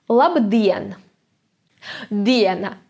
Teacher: and again we have that stress on the second syllable